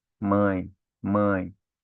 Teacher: Então, mãe, mãe. Ó, você fecha mais a boca para falar mãe e abre mais o nariz · no ditongo nasal, né? O som, ele sai mais pelo nariz, tá? Então, mãe, mãe.